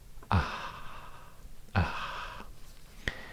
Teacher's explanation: then you're pronouncing the pharyngeal fricative voiceless